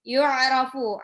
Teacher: Ain ini ya, jangan hamzah. Jadi harus masukin ke tenggorokan tengah.